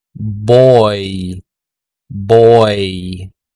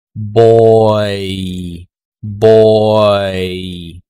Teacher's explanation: from rounded to unrounded so there's the transition very important transition boy boy okay we have the o and the y sounds